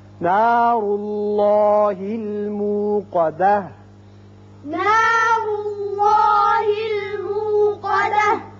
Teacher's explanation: موقدہ یا وقت کی صورت میں تا ہا کی شکل اختیار کرے گا، ساکن ہو جائے گا